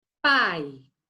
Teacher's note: eu tenho uma vogal forte, que é o A em pai, e eu tenho uma semivogal, que é o I, que passa desapercebidinho, então também elas vão ficar juntinhas em um ditongo, né?